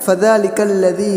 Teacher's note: فذلک الذی دونوں جگہ پر جو ہے ذال ہے، دونوں کو باریک، فذلک الذی نہیں پڑھیں گے بلکہ فذلک الذی ذال پڑھیں گے۔